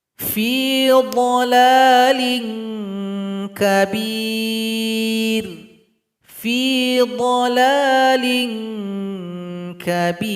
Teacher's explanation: Bunyi ikhfanya mengarah kepada huruf kaf. Huruf kaf tempat keluarnya pangkal lidah. Jadi bunyinya ing. · Jadi bunyi yang dihasilkan nanti adalah bunyi ing. Karena dia harus mengarah kepada huruf kaf. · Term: ikhfa adna